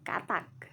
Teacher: bunyi hambat dorsovelar tak bersuara